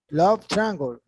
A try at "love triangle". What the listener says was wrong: Triangle. Love is more longer. Love triangle.